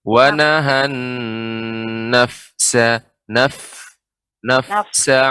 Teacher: Kemudian pada fa yang sukun, nafsa. Ya, sifat fa adalah ketika sukun adanya hamas